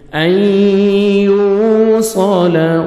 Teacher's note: یا مشدد سے پہلے سکون اور لیٹر نہیں پڑھیں گے، حمزہ کو ہم یا مشدد کے ساتھ ملائیں گے اور غنہ کریں گے، ادغام کریں گے، نوز میں ساؤنڈ لے کے جائیں گے